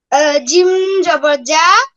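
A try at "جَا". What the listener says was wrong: এটা জিম জবর যা নাকি জিম আলিফ জবর যা হবে? আলিফ টানতে হবে। এদিকে দেখ, 4 আলিফ, হ্যাঁ, এটা থাকলে আলিফ টানতে হয়। 4 আলিফ টানতে হয়, তাই না?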